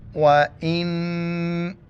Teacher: حمزہ کو نون کے ساتھ ملائیں گے اور ناک میں آواز پیدا کریں گے